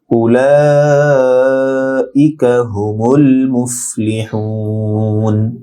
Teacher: উলা লা চার আলিফ লম্বা হবে · ইকা হামজা স্পষ্ট হবে, কা ছোট কাফ নরম হবে